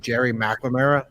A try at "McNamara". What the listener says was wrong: It's McNamara. No, there's no L in it.